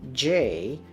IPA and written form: ʤeɪ (Jay)